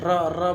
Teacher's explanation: जीभ एकदम से घर्षण करते हुए उठ रही है कंपन करते हुए और तालु को स्पर्श करते हुए झटके से नीचे की ओर आ रही है